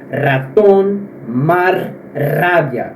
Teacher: No espanhol, o R ele é vibrado.